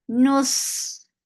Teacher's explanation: Sod will get rahawa. It is heavy and it has safir. Nus, the sound will not stop.